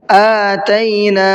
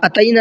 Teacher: حمزہ کو کھینچ کر کے پڑھنا ہے، اتینا نہیں پڑھنا ہے اس کو، ٹھیک ہے، اور بعد میں جو نون ہے اس کو بھی کھینچنا ہے۔